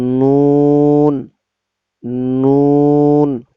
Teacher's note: জিহ্বার আগা তার বরাবর উপরের তালুর সঙ্গে লাগাইয়া নুন